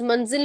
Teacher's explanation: لفظ منزل میں جو ز آ رہا ہے وہ وائبریشن والا ہے نہ کہ ذال